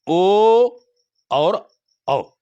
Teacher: कंठ ओष्ठ से उच्चारण होता है